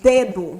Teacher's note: A gente quase morde a ponta da língua, porque é uma pronúncia mais dental. A língua empurra essa parte de trás do dente.